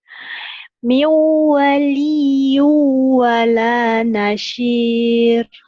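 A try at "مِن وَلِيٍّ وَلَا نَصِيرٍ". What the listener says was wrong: Nasir, sod ya, jangan ada anginnya.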